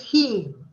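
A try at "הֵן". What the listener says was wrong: Hain. Hain. No, not heen. Hain. Same vowel, same vowel sound. The only difference is the end consonant is different. It's a mem. It's a mem for the masculine and a nun for the feminine. But the vowel sound is exactly the same.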